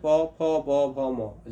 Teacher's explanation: जब भी आप प फ ब बोलते हैं तो आपका ऊपर और नीचे का होठ सटता है। ठीक है? और अगर नहीं सटेगा तो प म का उच्चारण नहीं होगा। · तो इसको हम, चूंकि यह ओठों के सटने से इसका उच्चारण होता है, इसलिए इसको हम ओष्ठ्य वर्ण कहते हैं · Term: ओष्ठ वर्ण